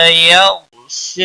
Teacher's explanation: یو غین کو ہلانا نہیں، غین موٹا پڑا جائے گا۔ شا کے اوپر کھڑی زبر ہے، 1 الف کے برابر کھینچ کر پڑھیں گے۔